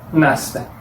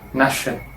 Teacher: suenan como sonido de S en Brasil y sonido de SH en Portugal